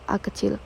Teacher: Vokal netral, yaitu diucapkan dengan bentuk bibir dalam posisi netral, misalnya vokal A kecil.